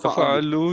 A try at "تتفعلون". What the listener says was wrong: تتا نہیں ہے، تتا دو تا ہیں، تتا تتفعلو تتفعلانی، تتا